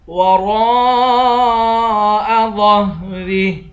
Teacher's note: را کے بعد الف ہے، الف حروف مدہ بھی ہے اور اس پر مد بھی ہے. اس مد کو 5 الف کی مقدار کھینچ کر پڑھیں گے.